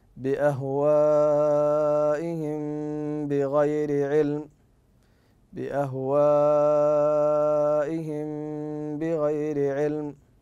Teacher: فهنا تختفي الميم في النطق لملاقاتها لحرف الباء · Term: الاخفاء